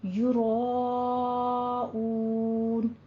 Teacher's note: آگے واو مد آ رہی ہے تو اس کو لمبا کھینچ کے 6 حرکتوں برابر پڑھیں گے